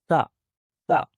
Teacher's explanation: जुबान की नोक सामने दांतों को टच करती है। सामने वाले जो ऊपर के दांत हैं उनके साथ टच करेगी जुबान की नोक।